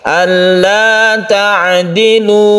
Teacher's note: Mad thi'i biasa ini satu Alif saja jangan terlalu dipanjangkan